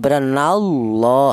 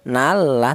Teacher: lafaz Allah ini didahului huruf yang berharakat fathah ini dibaca tafhim · lafal Allah tersebut dibaca tafhim atau dibaca tebal